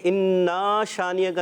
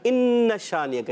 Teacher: الف کو انا کو کھینچنا نہیں ہے کیونکہ الف نہیں ہے